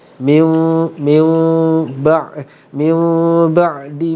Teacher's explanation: Dalam keadaan dengung itu bibir kita bersentuhan secara sangat ringan, jangan dikemam dan jangan dibuka. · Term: iqlab